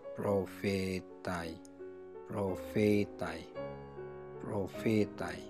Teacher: Jadi pada fetai, fetai itu panjang, kemudian dari tinggi kemudian menunjuk pada aksen yang mulai turun ya